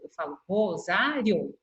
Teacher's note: o I e o O são duas vogais que não são tão fortes. Por isso que elas podem ficar juntas na mesma sílaba. E a hora que eu vou pronunciar o rosário, perceba que eu falo bem rapidinho e ela sai na mesma sílaba.